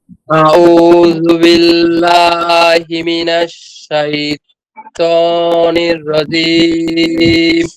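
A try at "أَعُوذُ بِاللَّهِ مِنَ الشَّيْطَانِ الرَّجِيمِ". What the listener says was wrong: শুধু শেষে জিমটাকে আরেকটু শক্ত করেন। জিম।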